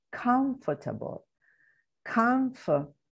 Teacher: We are also solving a sound problem, because if we place the stress at the beginning, first syllable in comfortable, comfortable, we get a weak sound in the second, or no sound, just the consonant sound